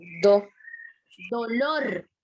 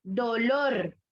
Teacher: Por lo tanto, es aguda. Lleva la fuerza de voz en la última sílaba.